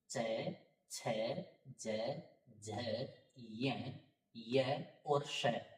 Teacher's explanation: तो ये जितने भी अक्षर हैं ई च छ ज झ य श, इन सब का उच्चारण स्थान तालु रहेगा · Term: तालव्य